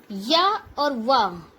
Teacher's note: या और वा ई से उ से मिलके बने हैं, इसलिए इन्हें हम अर्ध स्वर भी कहते हैं। अंतस्थ व्यंजन और अर्ध स्वर।